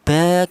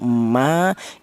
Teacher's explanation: dihasilkan dari kedua bibir yang rapat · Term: huruf mim